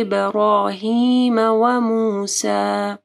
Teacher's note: صحف ابراہیم وموسیٰ، یہاں پہ صاد کو موٹا پڑھنا ہے، ہا کو واضح پڑھنا ہے۔ ابراہیم، با کے اوپر کلکلا کرنا ہے اور رو کو موٹا پڑھنا ہے۔